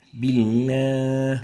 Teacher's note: There is no idgham, no merging for the lam, and the lam should always be existed in those cases. The last mistake is giving ghunna for the lam, a nasal tone. بالله. And that's wrong.